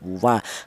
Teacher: dihasilkan dari kedua bibir yang renggang atau tidak nempel ya. Wa kalau nempel malah salah ya.